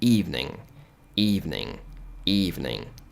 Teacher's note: Então ele fica um pouco mais nasal, o som evening